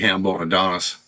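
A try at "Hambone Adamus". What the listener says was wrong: I still say you do not know that you're saying that wrong. Nostradamus. There's an M in it. Nostradamus. And you're saying Hambone Adonis. Hambone Damas. Adamas. Hambone Adamas.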